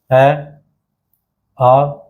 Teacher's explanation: अ का उच्चारण भी कहां से होगा कंठ से ही तो होगा